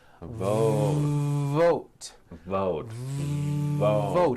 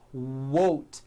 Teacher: you've got to stretch out the V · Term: long V sound